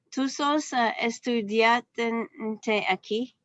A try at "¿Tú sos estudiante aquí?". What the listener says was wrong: Just a minute. A little bit more question form. Use the inflection, okay?